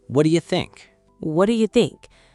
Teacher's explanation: The T in what disappears. The D and Y assimilate. The H in you is fine, but do reduces to duh or just da.